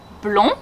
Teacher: blond, the ON makes the on sound and we do not pronounce the D.